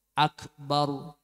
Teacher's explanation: tafkhim dan ro tarqliq kalau yang roll fathah atau dhomah itu dibaca tafkhim harus dengan cara memunculkan bibir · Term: ro dibaca tafkhim